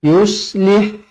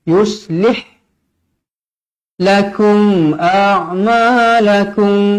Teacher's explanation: mim bertemu Hamzah izhar syafawi dibaca jelas dan terang